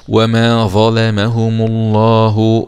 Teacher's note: اللام في اسم الجلالة مغلظة لأنها جاءت بعد حرف مضموم